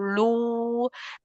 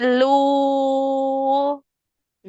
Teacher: Terus sama kolu yang dhammah, yang mad yang dibaca panjang madnya jaiz munfasil, itu lu-nya ngepung suara u-nya. Jadi usahakan lu-nya di al-jauf dan tipis suaranya. Jadi nggak lu, tapi lu.